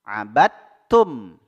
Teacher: huruf dalnya dimasukkan ke huruf ta-nya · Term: idgham mutajanisain